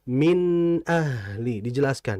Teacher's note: Nun mati kalau bertemu hamzah disebut dengan idhar. Dan dalam membacanya nunnya harus jelas.